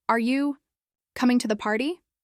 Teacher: Listen to how the voice rises at the end